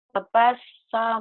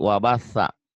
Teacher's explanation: cadel ujung lidah ke ujung gigi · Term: sa cadel